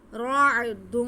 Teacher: را کو عین کے ساتھ ملائیں گے کیونکہ عین ساکن ہے، را کو موٹا پڑھیں گے، را پہ زبر ہے.